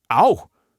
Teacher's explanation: what makes it so distinctly Roman is that long, stretched out vowel.